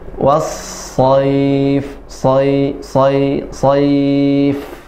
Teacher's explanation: Huruf sa sifatnya selain dia tafkhim yaitu hamas, nafasnya mengalir. Was-sayf, sayf ya, tidak sayy tapi sayf, say.